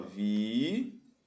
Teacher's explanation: Esse U forma hiato com a vogal anterior. É a sílaba tônica, ou seja, a sílaba mais forte. Está sozinho na sílaba.